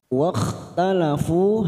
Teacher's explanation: Wakhtalafu, hati-hati masuk pada huruf kha sukun ya, jangan samakan dengan ha, ini lebih kasar sedikit. Wakhtalafu fu ada duma bertemu waw sukun 2 harokat.